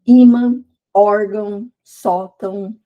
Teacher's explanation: Então, a penúltima é a mais forte. Quando termina com essas palavras, com essas sílaba contil, tem acento. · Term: paroxítona